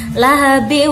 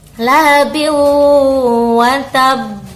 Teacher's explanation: tanwinnya kita masukkan kepada huruf sesudahnya yaitu wawu. Jadi idgham, memasukkan tanwin kepada huruf wawu. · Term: idgham bi gunnah